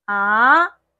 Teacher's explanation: So trust me, to sound authentic in Mandarin, don't play the third tone. Also, try to make your second tone going up